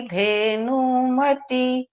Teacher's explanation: धेनुमति में नौ में जो हर्स्व है उसको दीर्घ किया गया